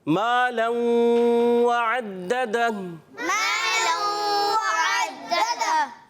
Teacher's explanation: اب اس میں دیکھیے ما ایک الف کو کھینچ کے پڑھیں گے، حرف مدہ ہے. لوں ادغام کا قاعدہ ملا کے، اور غنہ بھی ہوگا، ایک الف کا غنہ بھی ہوگا.